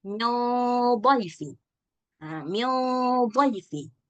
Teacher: Nah, kita nggak boleh baca min dhaifi, itu tipis. Harus tebal. Kenapa? Karena ada huruf isti'ala di depannya. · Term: Gunnahnya ikut tebal